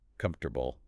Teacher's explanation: You completely lose the O and the A. >> They vanish entirely. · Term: elision